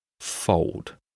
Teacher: In British English, we skip this L sound.